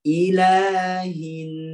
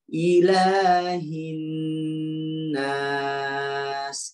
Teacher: Nun ketemu dengan nun, jadinya bertasydid. Jadi nun tasydid, ya cara bacanya adalah ditahan yang lama. Sudah berasa lama baru lepas, tapi jangan lama banget ya, lama.